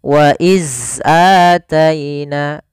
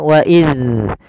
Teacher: Huruf zal itu makhrajnya, kita ulangi, ujung lidah kita, ujung lidah itu bertemu dengan apa? Gigi seri atas.